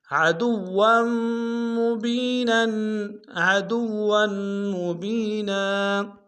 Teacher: اختتام میں کھینچیں گے، نون کے اوپر تنوین غنہ کریں گے، وقف میں تنوین کو الف سے بدلیں گے